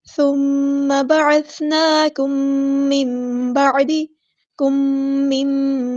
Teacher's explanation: میم ساکن کے بعد میم آیا تو یہاں پہ ادغام ہو رہا ہے تو الف کے برابر رکیں گے